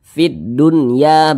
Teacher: tapi dia tidak memiliki tanda tasydid maka itu adalah izhar mutlak Nah karena dia izhar maka dibaca jelas tidak berdengung baca pendek saja